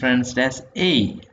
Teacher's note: of e okay so that is how it is a so it begins with a and then you will naturally Glide onto the next sound which is e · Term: diphthong